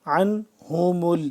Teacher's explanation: حلق کے درمیانی حصے سے عین ادا ہوگا